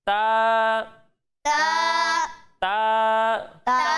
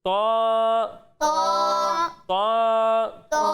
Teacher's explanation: جب ہم طا کی ادائیگی کریں گے تو اسے موٹا پڑھیں گے، کیونکہ طا حروف مستعلیہ میں سے ہے